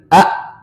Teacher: Pangkal tenggorokan atau tenggorokan bawah.